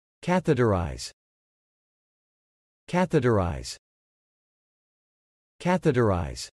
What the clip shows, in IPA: ˈkæθ ɪ təˌraɪz